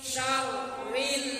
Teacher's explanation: Syarrin karena nun tasdid berarti rinnya dibaca gunnah.